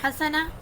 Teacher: ہا حلق کے درمیان والی حصے سے ادا ہوگی